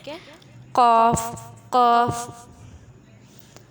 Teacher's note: زبان کی جڑ اور تالو کا نرم حصہ یہ قاف کا مخرج ہے